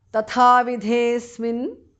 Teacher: The second tha and dhar mahapranah.